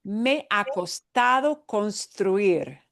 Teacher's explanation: even though it looks like ha, we don't want to hear an H. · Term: H is silent